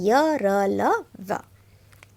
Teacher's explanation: इनके उच्चारण करते समय जीभ मुंह के किसी भी भाग को पूरी तरह से स्पर्श नहीं करती, वह अंतस्थ व्यंजन कहलाते हैं।